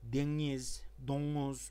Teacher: böyle NG veya genizden gelen N arası bir ses çıkarırlar. Ona biz sağırnun veya nazal N diyoruz.